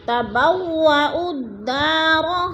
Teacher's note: تبوأوا الدار، دا پہ الف مدہ، الف خالی سے پہلے دال کے اوپر زبر ہے تو الف مدہ۔ الف مدہ کو بھی ایک الف دو حرکات کے برابر لمبا کر کے پڑھنا ہے